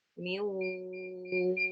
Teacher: Jadi ada gunnah gitu ya yang kita rasakan ada di hidung kita, ya di khayshum